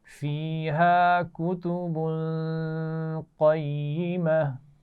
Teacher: وقف کرتے ہوئے ہا ساکن سے بدل کر پڑھ رہے ہیں